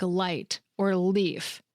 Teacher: The light L is what you hear at the beginning of words like light or leaf. Your tongue touches right behind your top teeth, and the sound feels bright and crisp.